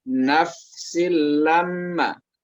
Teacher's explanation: huruf fa itu jangan dipantulkan bunyinya, Bu ya. Jadi dia di perut bibir ya.